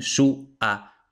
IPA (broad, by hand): su.ˈa.βe